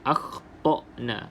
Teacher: pastikan Hamzah ini keluar pada halkum bahagian yang bawah sekali ha bahagian pangkal bahagian paling bawah akna iaitu tempat keluar huruf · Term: huruf hamzah yang mati